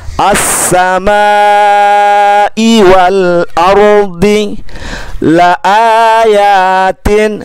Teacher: maka dibaca panjangnya sampai 5 huruf. Sampai 5 huruf. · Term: tanda bendera